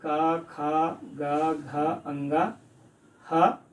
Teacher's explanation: ये कंठ से बोले जाते हैं, इसलिए इसे हम कंठ वर्ण कहते हैं